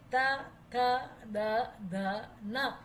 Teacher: એમાં આપણી જીભ દાંત સાથે સ્પર્શે પછી જ બોલાય